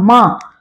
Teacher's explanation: म भी नासिक व्यंजन है क्योंकि इसमें हम नाक का प्रयोग करते हैं